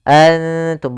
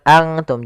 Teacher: Karena dia ikhfa itu menyamarkan huruf kepada huruf setelahnya. Yaitu nunnya disamarkan kepada huruf ta. · Maka cara membacanya samarkan kepada huruf ta. Nun makhrajnya di langit-langit, ujung lidah menempelkan dengan langit-langit. Maka makhraj huruf ta mendekati huruf nun, maka dinamakan di sini dengan ikhfa aqrab.